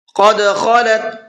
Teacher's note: قاف کو پر کر کے پڑھنا ہے اور خا کو بھی پر کر کے پڑھنا ہے